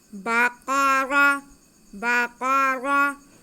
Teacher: قاف حروف مستعلیہ ہے، اسے ہم موٹا کر کے پڑھیں گے اور را پہ زبر ہے اس لیے ہم اسے موٹا کریں گے۔